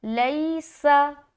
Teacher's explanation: سین کو بالکل ہی سیٹی کی طرح ادا کریں گے۔ کیوں؟ کیونکہ اس کے اندر صفت صفیر پائی جاتی ہے۔